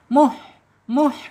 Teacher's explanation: Ha ada di tengah tenggorokan, kemudian secara sifat ada di al-hams ketika dia sukun.